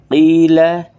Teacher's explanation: قوف اس کو حلق سے نکالنا ہے تھوڑا سا پور کر کے. قیل لام کو باریک کرنا ہے.